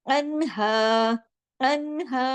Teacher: نون اس میں ساکن ہے تو اس کو جماؤ کے ساتھ پڑھنا ہے، ان آواز کو ہلانا نہیں ہے